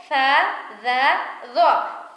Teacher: جب زبان سامنے والے دانتوں کے سرے سے لگے، زبان کو آپ کو باہر نکالنا پڑے گا